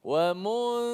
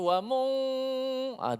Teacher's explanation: Okey, mulut kita ataupun lidah kita terus pergi pada za selepas kita sebut mim. Nun kita tak pergi dah makhraj nun. Nun hanya pergi pada hidung saja, sifat saja. Sifat gunnah ataupun dengung yang kena panjang kat situ. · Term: hukum ikhfa